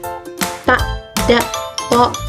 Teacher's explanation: terletak di ujung lidah dengan pangkal gigi seri atas dan gusinya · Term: apikodento alveolars